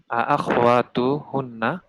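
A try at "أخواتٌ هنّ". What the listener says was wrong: আখওয়াতুন, তানবিন।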